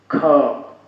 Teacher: ख, स्पष्ट पता चलता है कि मुंह से ज्यादा वायु निकल रही है, ज्यादा प्रयत्न करना पड़ रहा है। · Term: महाप्राण